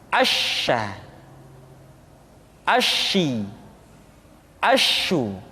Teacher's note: Dan sifat yang dimiliki oleh huruf sya yang paling nampak adalah apa yang disebut dengan sifat at-tafashi, yaitu menyebarnya angin di dalam mulut kita. Asya, asyi, asyu.